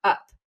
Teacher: every English speaker, if they say the word up, actually has a glottal stop at the beginning of that word